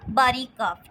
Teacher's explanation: باریک کاف، ٹھیک ہے، اس کو کچھ لوگ کیاف بھی پڑھتے ہیں جو کہ نہیں پڑھنا چاہیے